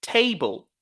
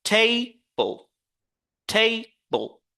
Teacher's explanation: you have to focus on the first syllable, and then the second syllable is weaker